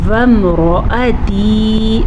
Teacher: را کو پر پڑھیں گے، را پہ زبر ہے، یہ یا مدہ ہے، تازیر یا تی، اسے ہم کھینچ کے پڑھیں گے، لیکن را اور زبر کو یا واو کی زبر کو ہم لمبا نہیں کریں گے۔